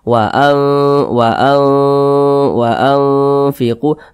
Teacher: Nah, karena makharijul huruf nun dan huruf fa ini dia di tengah-tengah, tidak terlalu jauh juga tidak terlalu dekat, sehingga dikatakan ikhfa hakiki awsat. Maka cara membunyikannya itu disamarkan juga didengungkan. Nah, karena dia di tengah-tengah, maka kadar samar dan kadar dengungnya itu seimbang begitu.